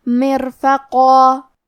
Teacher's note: کلمت مرفقہ میں قاف کی ادائیگی زبان کے جڑ اور تالو کے نرم حصے سے ہے۔ قاف حروف التفخیم میں سے بھی ہے، تو ہم یہ حرف کو موٹی آواز میں پڑھیں گے۔ ہم یہ کلمہ پہ رکتے ہیں تو تنوین زبر پہ مد الف سے رکیں گے، اور مد الف اپنے پیچھے والے حرف کا حکم لیتا ہے تفخیم میں اور ترقیق میں، لہذا ہمیں مد الف کو بھی بھاری آواز میں پڑھنا ہے۔